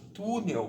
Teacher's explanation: Quando a sílaba tônica da palavra for a penúltima sílaba, é o caso de túnel, olha aqui, o tu, ele é a penúltima. E essa palavra, ela vai ser paroxítona.